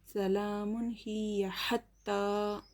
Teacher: کھڑا زبر برابر ہوتا ہے الف مدہ کے، ایک الف کے برابر کھینچ کر پڑھیں گے